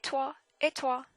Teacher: it's almost like you're pushing air out of your mouth when you say in the T. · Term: the T in French